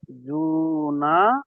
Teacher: নুন আলিফ জবর না ওটা আপনাকে টানতে হবে তো ওটা এক আলিফ টান আছে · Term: আলিফ মাদ্দা